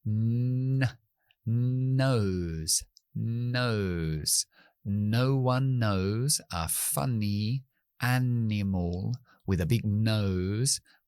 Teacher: en lugar de detener con los labios, como la M, voy a detener en la zona alveolar, como la N en castellano.